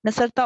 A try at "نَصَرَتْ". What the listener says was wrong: نصرت آخری حرف ساکن ہے، کہیں گے معنی بدل جائے گا. نصرت